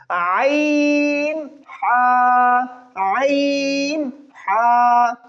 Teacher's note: এখন আমি একটু বলে দিচ্ছি, দেখুন হামজা, এটা হলকের একদম মানে গলার একদম শুরু থেকে হয়, তাহলে কি হামজা হা, এগুলো উচ্চারণ করতে কষ্ট হয় না। কিন্তু এইটা উচ্চারণ করতে হলে একটু হালকা কষ্ট করতে হয়, মানে গলার একটু ভিতর থেকে বলতে হবে